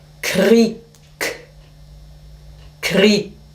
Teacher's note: auch wenn Sie ein G schreiben, es hat relativ viel Härte und Kontur am Ende. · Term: Auslautverhärtung